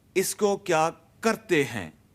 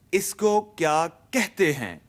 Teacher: Karte has an R sound before the T.